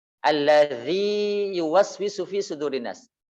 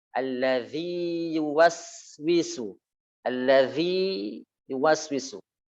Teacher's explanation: Karena ya sukun itu makhrajnya adalah jauf, sedangkan ya yang berharokat itu makhrajnya adalah tengah lisan. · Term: izhar